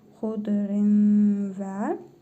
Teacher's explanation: İdğam-ı məal-qunnə qaydasına görə tənvindəki nun hərfini burnumuzda tələffüz edərək bir əlif miqdarı uzadırıq